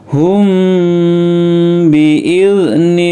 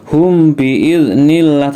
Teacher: Ikhfa Syafawi dibaca dengung dan ditahan beberapa saat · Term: ikhfa safawi